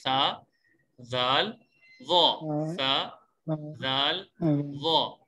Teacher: زبان کی نوک جب اوپر والے 2 دانتوں کے سرے سے لگے تو اس وقت سا, زال, ضا ادا ہوتا ہے. یعنی اس کا مطلب یہ ہے کہ زبان کی نوک ہو اور اوپر والے دانتوں کا کنارہ ہو تو اس سے یہ سا, زال, ضا ادا ہوتے ہیں. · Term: نرم حروف